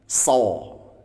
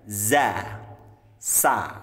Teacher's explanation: kalau kita mengucapkan sod ya, maka pangkal lidahnya terangkat ya, karena ini huruf isti'la ya, huruf yang diucapkan dengan mengangkat pangkal lidah sehingga suaranya menebal